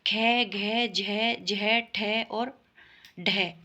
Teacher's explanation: है कार ठीक है जो है कार जैसी ध्वनि निकलती है इनके उच्चारण में श्वास अधिक मात्रा में निकलती है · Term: महाप्राण व्यंजन